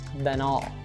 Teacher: You might also hear linking between then and all